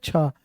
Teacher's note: छ जो होता है ना वो दूसरा होता है छ। छ है अघोष। दूसरा वर्ण अघोष।